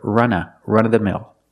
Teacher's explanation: people don't pronounce the v all the time. It's more common to hear run-of-the-mill.